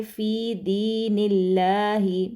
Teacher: جلالہ کا جو لام ہے وہ باریک پڑھا جائے گا کیونکہ پیچھے جو نون ہے اس پر زیر گزری ہے، ٹھیک ہے۔ تو ہم پڑھیں گے فی دین اللہ، ٹھیک ہے، دین اللہ ہی نہیں ہوگا، باریک پڑھا جائے گا۔